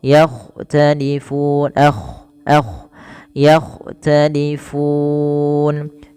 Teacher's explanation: Kemudian yakhtalifun, agak tebalkan sedikit dalam lafal kha